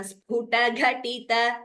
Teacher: Sphuta ta is alpa prana. Ghatita ta is alpa prana.